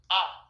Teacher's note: केवल एकमात्र स्वर जिसके उच्चारण में मुंह पूरा खुलता है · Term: विवृत